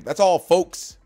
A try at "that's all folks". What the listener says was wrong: No, that's all folks. There's an L. Folks.